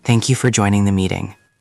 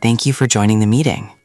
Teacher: the second one sounded higher and warmer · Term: smile